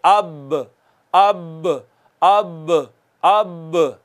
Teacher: तर हिस्सा होता ही अंदरूनी है, होंठों का तर हिस्सा अंदरूनी होता है ना, तो ज्यादा बेहतर है वैसे ये लिख लें, दोनों होंठों के तर हिस्से के मिलने से बा अदा होती है